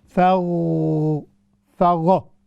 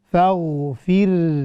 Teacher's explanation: لیکن یہاں پر جو بڑی توجہ طلب بات ہے وہ یہ ہے کہ غین اور را اس میں ہم نے قلقلہ نہیں کرنا, ہم نے ان کو باؤنس نہیں کرنا, ان میں جو ہے ایکوئنگ ساؤنڈ ہم نے بالکل نہیں ڈالنا.